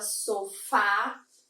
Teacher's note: quando eu falo a palavra sofá, essa última sílaba ela tem uma acentuação por conta dessa tonicidade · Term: oxítona